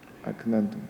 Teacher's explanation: Pada kalimat aknantum ini huruf kaf yang bersifat hamas dan disukun berada di tengah-tengah kata.